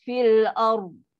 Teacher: Bunyi masih berjalan tapi nafas dah stop dah. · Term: manjang suara tanpa nafas